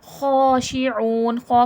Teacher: مخرج یعنی کہ نکلنے کی جگہ، خو کہاں سے نکلے گا؟ خو حرف حلقی میں سے ہے، اور یہ ادنائے حلق سے نکلے گا